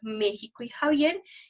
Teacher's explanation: La fricativa velar sorda